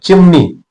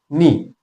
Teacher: तर ची पटकन म्हणते पण नी म्हणताना मात्र काय होत थोडस लांबत ते थोडस लांबत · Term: दीर्घ